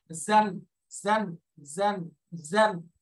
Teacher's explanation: এরপরের অক্ষর আছে যা যা যা, এটার উচ্চারণ জান জান, একটু জিহ্বার আগা নিচের দাঁতের গোড়ার সাথে লাগবে